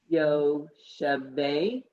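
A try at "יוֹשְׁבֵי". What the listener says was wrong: And it blends. It's Yoshvei. No dot in there. No dot.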